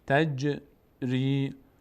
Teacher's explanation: جیم هم مثل دال مقداری در مخرجش میلرزه.